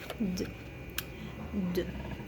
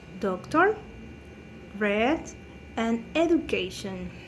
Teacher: The place of articulation is lingualveolar because this sound is produced by the tongue contacting with the upper alveolar ridge